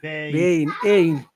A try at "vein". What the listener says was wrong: Yeah, I have to hear the E part. Vein. Vein. Vein. say vein, when you say the second part, you pull your tongue back like this. So here's the top of your mouth, and here's your tongue. Your tongue goes like